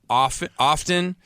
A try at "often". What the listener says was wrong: No, you cannot pronounce the T. Yeah, the T is silent.